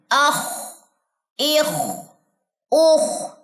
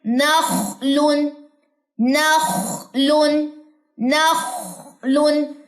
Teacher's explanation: خواہ پہ آ جائیے، اخ، اخ، اوخ. خواہ کہاں سے ادا ہوتا ہے، ادنی حلق سے، گلے کے بالکل سٹارٹ سے ادا ہوتا ہے